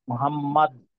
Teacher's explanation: শেষে যেহেতু দাল, দালে শেষ হচ্ছে তো আংশিক কলকলা করাটাই ভালো